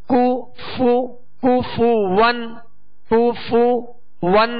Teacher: کاف پر پیش ہے، فا پر پیش ہے، دونوں کے پیش یہ صحیح سے ادا کریں گے، ہونٹوں کو گول بھی کریں گے اور بغیر کھینچے بغیر جھٹکا دیے معروف ادا کریں گے.